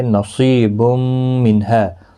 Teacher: صاد مستعلیہ ہے، پر پڑھا جائے گا، یا مدہ بھی ہے، ایک الف کی مقدار کے برابر کھینچ کر بھی پڑھیں گے۔